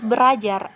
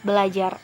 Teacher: Seharusnya jika tidak ada perubahan itu pengucapannya adalah berajar. Namun karena terdapat 2 R, maka R yang pertama itu diasimilasikan sehingga kata berajar berubah menjadi kata belajar